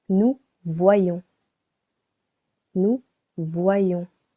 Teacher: Nous voyons here we want to make it two syllables. Vois and yon. To do so we need to change letter I to letter Y.